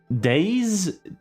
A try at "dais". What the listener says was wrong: It's actually 2 syllables.